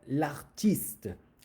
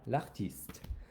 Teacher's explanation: L'artiste, because this word begins with a vowel. So you don't even hear the le or the la.